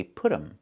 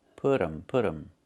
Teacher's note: And you hear um instead of them. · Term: reduction